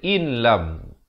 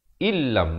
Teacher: Walaupun pada asalnya hamzah bertemu nun bunyi in, kemudian lam bertemu mim bunyi lam, in lam, tapi di sini kena baca illam. Illam, masuk terus di dalam lam itu tanpa didengungkan. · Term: idgham bila gunnah